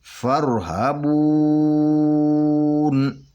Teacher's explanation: نون کو ساکن کرنے سے پہلے یہ فرحبون جو لفظ ہے نا بون، اس کو 2 یا 4 یا 6 حرکت کے برابر کھینچ کر پڑھیں گے، لیکن ہم قرآن پاک 4 حرکت پہ پڑھ رہے ہیں تو اس کو ہم 4 حرکت کے برابر کھینچ کر پڑھیں گے، فرحبون، اور 4 حرکت کے برابر کھینچ کر پڑھ کے اس کے بعد یہ نون کو ساکن کر دیں گے تو یہاں پہ رک جائیں گے، فرحبون ایسا پڑھیں گے۔